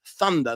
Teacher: He would go Zunder or Dunder, because as with a lot of Europeans, they have trouble with the TH sound.